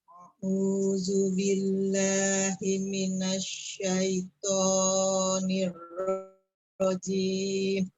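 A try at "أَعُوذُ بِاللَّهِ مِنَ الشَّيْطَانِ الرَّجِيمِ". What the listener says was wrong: Oke, to-nya coba dikurangi panjangnya sedikit. A'udzu billahi minasyaitonir Coba.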